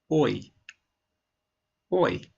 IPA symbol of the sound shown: ɔɪ